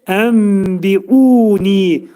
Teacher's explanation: Ənbiunidə nun hərfi bəyə yetişir, mimə çevrilir. Buna iqlab deyilir. İqlab, demək, aşkar şəkildə mimi bildiririk.